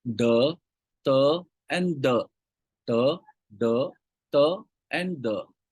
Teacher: the tip of the tongue attached to the upper teeth is called as a Dental consonant sounds